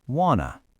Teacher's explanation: Notice we don't just reduce the word to. We actually smash the two words together into a brand new twocllable word.